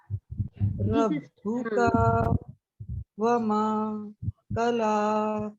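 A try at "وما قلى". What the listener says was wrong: फिर माँ आया, फिर उसको लंबा करना था. वमा क़ला. इस सूरत में पता है क्या है, हरूफे मद्दा आ रहे हैं, जिसको एक अलिफ के बराबर पढ़ना है.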